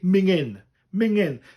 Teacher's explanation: I like most Welsh people in this area, I drop the G.